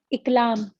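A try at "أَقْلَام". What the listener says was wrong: अकलाम। अकलाम, जबर के देखिए, आप जब उल्टा बोलेंगी ना तो आपकी जबान आपको खुद ही गवाही देगी कि आप गलत बोल रही हैं। इकलाम, इकलाम तो आपने कभी नहीं सुना होगा।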